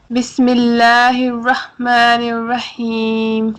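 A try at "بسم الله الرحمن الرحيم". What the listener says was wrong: Now good, very good.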